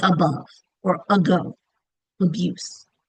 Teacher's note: Think of the word panda, umbrella, stigma. Um, Open A at the beginning will usually change, not always, but usually change to a schwa